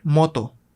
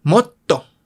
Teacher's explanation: Lo que hace la consonante doble es añadir énfasis a la letra que va antes de la consonante doble, a la vocal. En este caso es una O. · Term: consonantes dobles